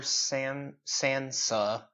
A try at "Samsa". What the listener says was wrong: It's Samsa. not Sansa. Samsa with an M.